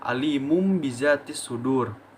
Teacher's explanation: huruf nun mati ataupun tanwin yang bertemu dengan huruf ba maka nun mati ataupun tanwin ini dirubah bentuknya menjadi huruf mim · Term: iqlab